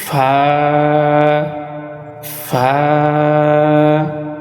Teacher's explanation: নিচের ঠোঁটের পেট সামনের উপরের দুই দাঁতের আগার সঙ্গে লাগাইয়া একটি হরফ উচ্চারিত হয়, সেটা হচ্ছে ফা।